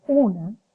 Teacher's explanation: esa vocal a recibe la influencia de la consonante nasal que está próxima a ella y que la oro nasaliza.